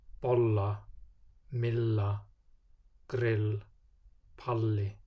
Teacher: In loan words and gælunöfn, or Icelandic nicknames, the pronunciation is just a long L sound.